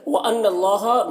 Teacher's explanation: نون مشدد ہے، غنہ ہوگا یہاں پر، اور اللہ کو پر پڑھیں گے